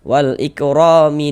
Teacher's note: Huruf ro memiliki harakat fathah ya, baris fathah. Maka huruf ro dibaca takhim, dibaca tebal.